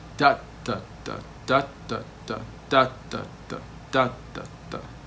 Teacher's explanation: Stress, slack, slack, stress, slack, slack, stress, slack, slack.